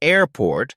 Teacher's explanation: in airport the stress is on air not port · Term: syllable stress